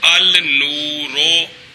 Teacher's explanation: لام کو نون کیا، نون کا نون میں ادغام کیا تو النورو۔ اچھا جی، یہ پہلی شک آ گئی ہے۔